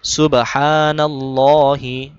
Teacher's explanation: হা গলার ভিতর থেকে এক আলিফ টান দিতে হবে